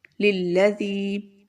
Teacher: یہاں پر بھی یا مدہ ہے ہمارے پاس، یا ساکن سے پہلے زیر ہے تو اس کو بھی ہم تھوڑا لمبا کریں گے، للذی۔ ذال کی آواز بہت اچھے سے آپ نے ادا کرنی ہے، ذال میں سیٹی کی آواز نہیں ہونی چاہیے